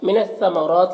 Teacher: را کے اوپر کھڑا زبر ہے تو را کو پر پڑھیں گے